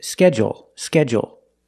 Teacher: And they put the stress only on the first syllable.